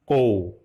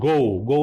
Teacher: Suara pangkal lidah ya, dilafalkan seperti konsonantal K dalam bahasa Indonesia. Misalnya ko dilafalkan ko, bukan go salah ya.